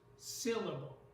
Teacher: in the word syllable the first syllable is stressed